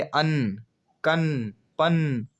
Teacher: इसके उच्चारण में हवा मुख के साथ साथ नाक से भी निकलती है। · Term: अनुनासिक